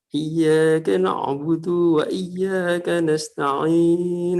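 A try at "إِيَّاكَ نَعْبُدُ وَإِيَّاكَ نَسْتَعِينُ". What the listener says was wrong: Nah, di sini dunya terlalu panjang, Pak. Jadi mungkin terkena dengan nada atau apa sehingga madnya seharusnya itu tidak ada mad. Cuma karena mungkin ke bawah nada jadi ada mad panjang itu, Pak. Jadi harus langsung iyyaka na'budu wa iyyaka nasta'in.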